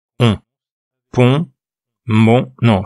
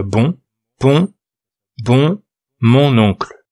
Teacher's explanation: Le dernier son nasal, c'est le on. Il vient d'un O qu'on prononce avec le nez.